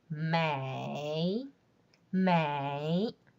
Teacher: the falling part in the third tone is quite low and there's a bounce in the tone